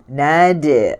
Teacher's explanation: Okey, sebutan dal, lidahnya diletakkan di gigi atas, di pangkal itu, di gigi atas, di belakang gigi atas, menekan di situ, menolak, kemudian lepaskan, maka berbunyilah qalqalah. Kalau kita tidak lepaskan, dia tidak akan melantun, maka dia tidak ada qalqalah. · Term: qalqalah sughra